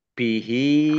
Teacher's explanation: namanya Mad Silah qosirah sama dengan mad thi'i dibaca panjang dua harakat